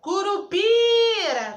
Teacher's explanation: eu fiquei um tempão falando então o PI é a minha sílaba tônica